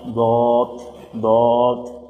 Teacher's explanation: জিব্বার গোড়ার কিনারা উপরের মাড়ির দাঁতের গোড়ার সাথে লাগাইয়া